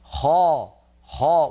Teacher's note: الخاء يجب أن تكون مفخمة هكذا، خاء، وينطقها نطقا صحيحا، فإذا قرأ يقول لك خالدين فيها.